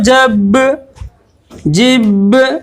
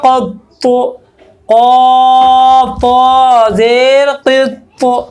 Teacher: جب ان پر جزم ہو تو ان کو پڑھتے وقت ان کے مخرج ٹکر کھا کر الگ ہو جاتے ہیں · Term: قلقلہ